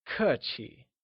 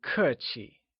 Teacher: kur is pronounced using a falling tone and Qi with the neutral tone